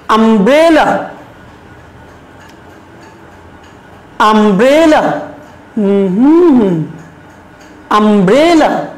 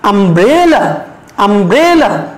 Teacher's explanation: এই যে ব্রে, এখানে আমরা একটু প্রেসার দেব, এখানে আমরা একটু জোর দিয়ে বলবো। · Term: স্ট্রেস